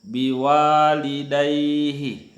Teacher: ada fathah bertemu dengan alif yang tidak punya baris, maka dibaca agak panjang 2 harakah. Biwalidaihi, dai itu agak panjang juga. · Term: matabi